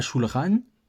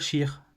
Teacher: avec un accent français, on va dire à shulchan, et on va dire shir. Et donc, en fait, on a vraiment aucune différence de son. Moi, c'est pour ça que je préconise le R roulé pour pouvoir différencier avec le chet. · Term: R à la française